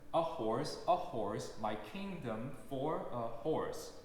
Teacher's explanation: for will receive a lot of stress that it does not deserve, such as a horse, my kingdom for a horse.